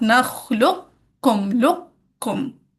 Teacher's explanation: پہلے موٹا والا قاف ادا کریں گے بغیر قلقلہ کے، اور پھر باریک والا کاف.